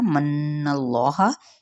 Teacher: यहाँ पे नून पे गुन्ना किया जाएगा और इसमें जलाला का लाम पुर पढ़ा जाएगा।